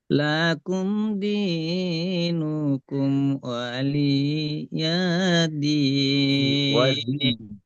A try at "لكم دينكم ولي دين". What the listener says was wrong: জি ওয়ালিয়াদিন, ঠিক আছে মাশাআল্লাহ।